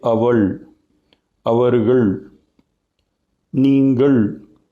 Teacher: ल में हम अपनी जुबान को पीछे को मोड़ते हैं, that's why it is known as रेट्रोफ्लेक्स ल